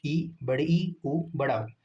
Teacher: संवृत स्वर मुख लगभग बंद होता है।